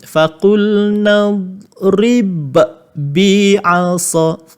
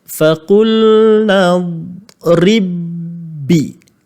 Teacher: ba yang mati ni mesti dimasukkan pula ke dalam ba yang bersabdu